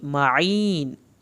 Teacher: لگے گی، معین، ان کو عین کو حلق سے پڑھنا ہے، یا ساکن کو کھینچنا ہے اور نون کو آخر میں ہلانا نہیں ہے